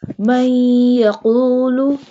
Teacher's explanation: Qaf pronounced from the root of the tongue touching the soft part of the palate.